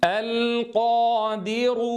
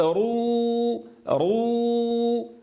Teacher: انظروا صوت الراء فقط مفخم، لا ينتقل هذا التفخيم إلى الواو حين ننطق بها، فلا يصح أن نقول رو فننطق بواو مفخمة.